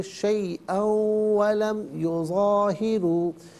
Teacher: را پر پیش را کو پر کر کے پڑھیں گے